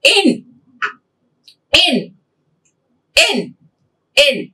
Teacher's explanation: It is front, unrounded vowel between close and half close.